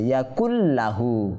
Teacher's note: ইয়াকুন শব্দটাকে আমরা পরবর্তী লাহু শব্দের সাথে যুক্ত করব কিভাবে? গুন্না না করে, অর্থাৎ গুন্না ছাড়া ঈদগাম এখানে হচ্ছে ইয়াকুল লাহু, ঠিক আছে। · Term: ঈদগামে বে গুন্না